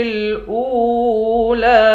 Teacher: حمزے کو واو کے ساتھ ملا کر واو کو ایک الف کی مقدار کھینچ کر پڑھیں گے،